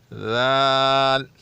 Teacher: زبان کو دونوں دانتوں کے درمیان سے تھوڑا باہر نکال کے پھر ادا کیا جاتا ہے